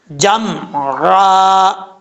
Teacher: عین کو پڑھتے وقت آپ نے عین کو اپنے مخرج سے ادا کرنا ہے، نہ کہ حمزے کی آواز آنی چاہیے